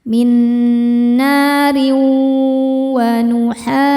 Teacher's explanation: Cara bacanya tanwin dileburkan ke wau minarin disertai dengung tahan. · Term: idgham bighunah, idgham bi gunnah